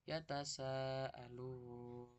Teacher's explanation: Membacanya panjang kira-kira 5 harokat. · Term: mat wajib mutasil